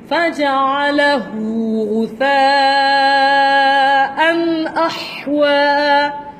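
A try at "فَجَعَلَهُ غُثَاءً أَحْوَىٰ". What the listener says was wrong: Tidak panjang.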